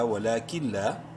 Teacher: نون ساکن کے بعد لام حروف یرملون میں سے ادغام بلا غنہ ہوگا، ولیکن لام الف زبر لا، ولیکن لا.